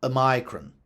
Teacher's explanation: UK English preserved the Latin stress on omicron in its traditional pronunciation of the letter, which resulted in a long I,